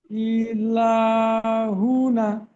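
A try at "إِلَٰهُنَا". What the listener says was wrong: হুনা, না টান হবে, ইলা হুনা।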